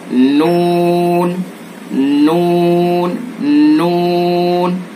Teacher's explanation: जबान के किनारे को जवाहिक से पहले अनियाब दांत हैं, रुबाइयात के बराबर में, और जवाहिक से पहले उनको अनियाब कहते हैं। तो जबान के किनारे को अनियाब के जो मसूड़े हैं उनसे टच करेंगे, एक नाब से लेकर दूसरे नाब तक और ऊपर के दांतों के मसूड़े।